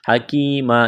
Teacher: یا مدہ ہے، ایک الف کے برابر کھینچنا ہے